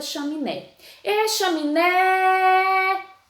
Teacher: então ela é oxítona porque o né é a sílaba tônica e ela é a última